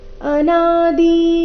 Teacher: ಈ ಚರಣದಲ್ಲಿ ಅನಾದಿನಲ್ಲಿ ನ ಮಾತ್ರ ದೀರ್ಘ ಅನಾದಿ ಈ ರೀತಿ ದಿನ ನ ದೀರ್ಘ ಮಾಡಬಾರದು ಅನಾದಿ ಮತ್ ಪರಂ ಬ್ರಹ್ಮ